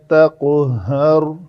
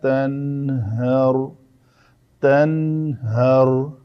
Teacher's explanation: قاف کو ہم نے قلقلہ کیا لیکن اس کے مقابلے میں اسی وزن پہ نون آیا، تو نون کو ہم نے قلقلہ نہیں کیا